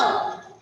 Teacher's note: हे 5 अक्षर म्हणताना प्रत्येक वेळी आपली जीभ आहे ती वर टाळूला लागते. आणि काय होतं, आत ती जरा वळल्यासारखी वाटते.